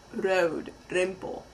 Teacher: in Dutch the r is a flap which means your tongue hits the roof of your mouth right behind your teeth